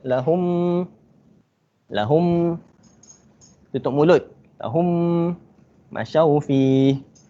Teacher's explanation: kena baca dengung 2 harakat. Lahum, tutup mulut. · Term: idgham syafawi